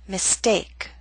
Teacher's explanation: Note with the ST we do not have the strong puff of air.